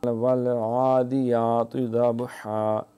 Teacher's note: یہ عین جو ہے یہ حلق سے جو ادا ہوتی ہے، جو اس کا نرم حصہ ہے وہیں سے ادا کریں گے۔ والعادیات، یہ حمزہ نہ بن جائے، والعادیات، دے نہیں عادی، یاتے نہیں یاتی۔